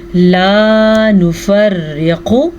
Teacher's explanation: میں نے یہ را باریک پڑھی ہے کیونکہ اس را کے نیچے زیر ہے